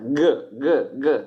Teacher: Il G è l'occlusiva velare sonora, G, sentite, occlusiva perché chiude, velare perché sta sul palato, si dice anche palatale, velo della bocca, il palato della bocca.